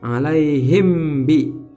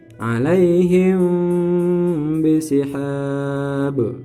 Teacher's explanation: Alaihim kemudian bibirnya dirapatkan atau mendekati sama mirip dengan hukum iqlab dalam hukum nun mati, tanwan, tanwin, tanwun. Jadi mimnya ini disamarkan, jadi tidak sempurna dibaca mim. Tidak dibaca alaihim bi, tapi alaihim bisihab. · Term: ikhfa syafawi